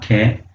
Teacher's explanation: कंठी वर्ण जो हमारे कंठ से बोले जाते हैं